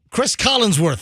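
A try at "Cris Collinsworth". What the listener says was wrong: Oh, damn it. You've been saying it with a G like, for the last 20 times.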